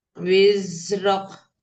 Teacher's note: Wiznya alirkan dulu, baru pindah ke ro.